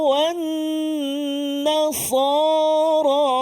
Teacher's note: Nun yang bersabdu ataupun kalau kita selalu sebut wajibal gunah. Cara baca dia wajibal gunah. Wajib kena dengung. · menyebut nun tidak terkesan dengan ketebalan huruf sad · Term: nun musyaddadah